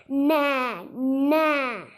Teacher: நம்மளோட நாக்கு மேலண்ணத்தோட நடு பகுதியையும் தாண்டி போய் தொட்டு சொல்லணும் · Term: டன் நகரம்